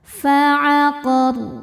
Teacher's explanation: Saat berhenti di huruf ro-nya ini jadi sukun dan dibaca secara tafkhim. Kenapa? Karena sebelumnya ada fathah, maka ro-nya dibaca tebal.